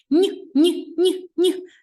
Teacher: Ось так м'який подовжений приголосний звук